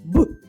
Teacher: боксерську грушу б б б звук хлопчика боксера Борі звучить б пісенька не виходить звук немов вибухає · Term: звук Б